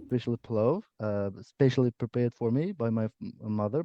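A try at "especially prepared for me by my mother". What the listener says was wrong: cool. Nice uh, nice passive there.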